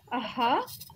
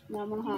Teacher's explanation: It's called Visarga. It has an aspirate sound